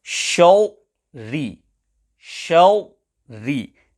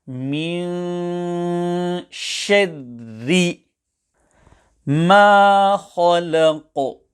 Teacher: Both of the ra must be pronounced empty mouth